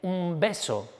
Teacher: la N ya no es N sino es M